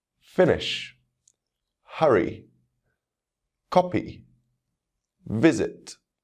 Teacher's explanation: second syllable as always there are exceptions finish hurry copy visit he can hear the stress falling on the first syllable in these words